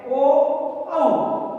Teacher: कंठ और ओष्ठ का प्रयोग होता है और कंठोष्ठ भी इसको कहा जाता है।